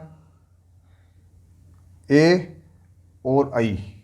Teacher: ए और आई, ये कंठ और तालु दोनों से मिलता है, ए और आई। इसको बोलते हैं कंठ तालव्य।